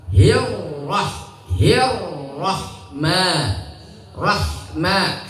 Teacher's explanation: Itu jangan ya, tidak dianjurkan karena ee berlaku hukum idgham namanya ya. Rnya berharakat fathah langsung tebal. · Ro itu ketika berharokat fathah atau dhamma, maka dibaca tafkhim, artinya tebal.